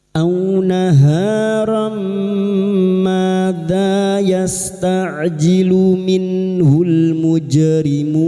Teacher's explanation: Pertemuan antara huruf mad dengan huruf vokal yang dibaca waqf adalah mad arid lissukun, kita panjangkan empat harakat. A naharam maza yasta'jilu minhul mujrimun.